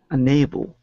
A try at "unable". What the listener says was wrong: It's just your A sound. Make it a long A, a hard A sound. Unable.